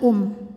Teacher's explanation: idgham bunah karena ada tanwin dammah yang menghadapi huruf mim maka bunyi tanwin dileburkan ke mim bukan lagi UN tapi Um disertai bunyi dengungan